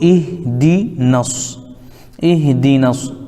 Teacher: اب یہاں پہ یہ الف بھی گر جائے گا، اور الف لام چونکہ حروف شمسی کے شروع میں ہیں اس لیے الف لام کو نہیں پڑھیں گے، ڈائریکٹ نون کو صاد میں ملا دیں گے